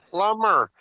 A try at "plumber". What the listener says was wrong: You're pronouncing it wrong. You're pronouncing it wrong. It's a plumber. That's how you pronounce it. You're saying the word wrong. It's plumber. No, you pronounce the B. It's a hard B.